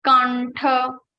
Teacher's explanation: It is ta varga. So Anuswara sound will be converted into ta varga's fifth letter, that is rang.